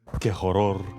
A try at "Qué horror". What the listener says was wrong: Qué horror. We don't pronounce the H. Qué horror.